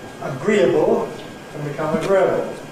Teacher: ‘agreeable’ [əˈgriːəbl̩] can become [əˈgrɪəbl̩]